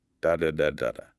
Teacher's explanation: It's very steady. Every syllable gets about the same amount of time. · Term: syllable timed